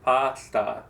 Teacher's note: you don't do what we call reducing the vowel. In English, we reduce vowel.